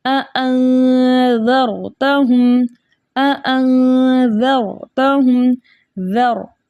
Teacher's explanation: ज़ाल बारीक है और रॉ मोटा है